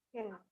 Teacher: ketika tidak ada S sebelum P, maka itu eksplosif gitu ya. Makanya dibilangnya pain.